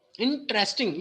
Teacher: There is a 4 syllable, but you have to focus on the first syllable in this word.